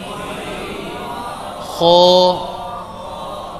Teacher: ادنا حلق, حلق کا وہ حصہ جو منہ کی طرف ہے, اس سے غین اور خو ادا ہوتے ہیں